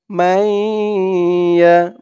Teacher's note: মাই বলে গুন্না করতে হবে, ঈদগামে বা গুন্না।